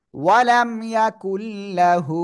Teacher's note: নুন সাকিনের পরে র আর লাম এই দুইটা অক্ষরের একটা অক্ষর লাম আসছে আমরা কি করব গুন্না ছাড়া মিলিয়ে পড়ব